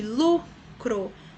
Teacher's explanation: Lu é a sílaba mais forte, a penúltima, então é paroxítona.